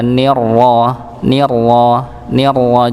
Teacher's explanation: Rnya tetap tebal, nunnya tetap tipis, tidak berubah.